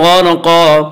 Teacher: را ساکن سے پہلے غین کے اوپر زبر ہے اس لیے را ساکن کو پر پڑھیں گے